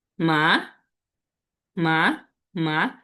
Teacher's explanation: Second tone, এটা হচ্ছে rising tone. আমাদের শব্দটা আমাদের যে স্বরটা আছে এটা হচ্ছে একটু উপরে উঠবে এরকম।